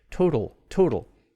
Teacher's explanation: the second t is between vowels and it becomes that sort of flat d like thing